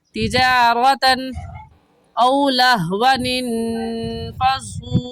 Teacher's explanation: तिजारतन की तनवीन पर गुन्ना नहीं करेगी, क्योंकि तनवीन के बाद हरूफ हल्की में से हमज़ा आ गया है। और कायदा है कि नून साकिन या तनवीन के बाद हरूफ हल्की का कोई लफ्ज़ आ जाए तो उस तनवीन पर या नून साकिन पर गुन्ना नहीं करते।